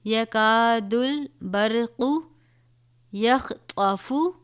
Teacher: خوا کو بھی پر پڑھا جائے گا اور طا کو بھی، حرف مستعلیہ میں سے ہیں